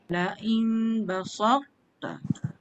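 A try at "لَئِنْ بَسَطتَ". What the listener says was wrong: To cantik. Sin jadi sod. Perasan tak? Basalta. Tak boleh dia jadi basata. Dia tak boleh so. Basa. Baru to tu tebal. La in basalta.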